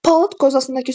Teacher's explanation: sözün sonundakı d samiti t ilə əvəz olunur. Yəni ki, öz karşılığı ilə əvəz olunur.